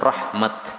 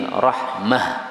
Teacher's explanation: kalau berhenti maka cara membacanya bukan rahmat tapi rahmah. Berbeda dengan qiraah Hafs.